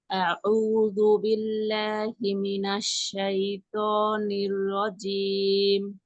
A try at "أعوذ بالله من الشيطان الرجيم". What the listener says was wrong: অটা একটু মোটা হবে, ত ত ত কিভাবে হবে? আপনার জিহ্বার যে মানে আহ, এই অংশটা আছে না, এই অংশটাকে আমরা কয়টা ভাগে ভাগ করতে পারি? আমি যদি একটু উপরে যাই, এই যে দেখেন, এই অংশটা আছে না, যে এই অংশটা, এইটা ব্যবহার করবেন, এই অংশ না। এই অংশ ব্যবহার করলে মানে তো সুন্দর হবে না।